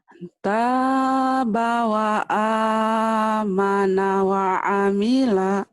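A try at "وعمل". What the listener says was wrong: Iya, wamilanya pendek ya. Wamila. Wamila kayak orang Judes ya.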